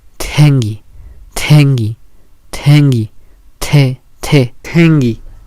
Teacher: Para poder pronunciarla solo hay que pronunciar la T común, pero hay que ponerle una aspiración extra